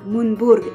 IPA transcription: mundburg